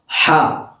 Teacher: ഹാഇൻ്റെ മഖ്റജ് എന്ന് പറയുമ്പോൾ വസ്തുൽ ഹൽഖാണ്, തൊണ്ടയുടെ നടുഭാഗം, മധ്യഭാഗം. ഹ, അഥവാ നമ്മൾ സാധാരണ എരിവൊക്കെ സംഭവിക്കുമ്പോൾ എന്ന ശബ്ദം പുറപ്പെടുവിക്കാറുണ്ടല്ലോ, ഇതേപോലെ തന്നെയാണ് ഹ പുറപ്പെടുവിക്കേണ്ടത്.